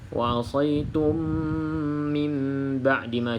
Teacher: bila mana kita tutup mulut tu pastikan dengung jugalah dua harakat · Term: ikqlab